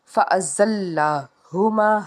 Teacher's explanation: ہا جو ہے حرف حلقی کا حرف ہے، حلق کے نچلے حصے سے ادا کریں گے۔